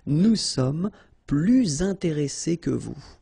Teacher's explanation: you make this little link, little liaison between the two, so you hear a little bit this S